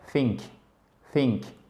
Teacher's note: le TH qui se fait en pointant le bout de la langue entre les dents du bas et les dents du haut